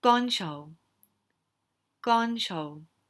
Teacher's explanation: Gon, again, is that high tone. Cho is just the middle tone.